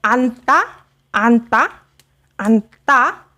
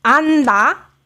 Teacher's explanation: When anta is a verb, base verb that means to hug, then it's pronounced anta with double consonant, tigut.